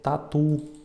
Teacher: Igual tatu também não tem um acento, mas a gente vê que o tu é a sílaba mais forte